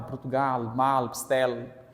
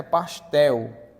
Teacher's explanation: Este L também é uma semivogal, porque ele tem um som de U